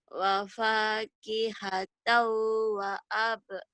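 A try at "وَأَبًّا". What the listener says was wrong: Jangan dikolahkan. Kan ini mah hidup. Wa abba.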